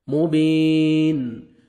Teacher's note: یائی مد ہے، 1 سیکنڈ با کو کھینچنا ہے آپ نے، یا ساکن سے پہلے زیر آ رہا ہے، اور جب سٹاپ کریں گے لاسٹ لیٹر ساکن ہو جائے گا۔